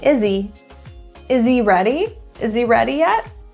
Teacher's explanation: that H will be dropped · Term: dropped that H